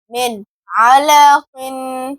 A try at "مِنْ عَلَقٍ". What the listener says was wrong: عین بھی ادا کریں، حمزہ ادا ہو رہا ہے. علق